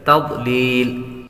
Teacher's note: ضاد حروف مصالیہ میں سے ہے اس لیے اس کو پر پڑھیں گے